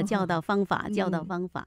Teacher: 那导字呢是第三声，它的音有点偏到第四了